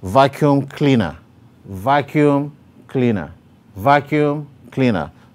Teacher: the primary stress is on vacuum while the secondary stress is on cleaner